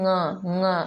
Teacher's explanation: इसलिए उसे स्पर्श भी कहते हैं और अनुनासिक भी कहते हैं। क्योंकि इसका उच्चारण मुख के साथ नासिका से भी होता है